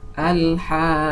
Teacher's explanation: the qaf having shadda here comes after mad letter, and when splitting it, you can see that the first qaf is having sukun and the second qaf is having vowel. We have to lengthen it for 6 vowel counts.